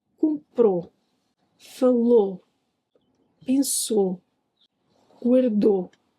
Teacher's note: in the past, o is usually clearer and the queen, my metaphor for word stress, is at the end · Yup, the stress is at the end, which helps the past tense pop out when you're listening. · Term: stress syllable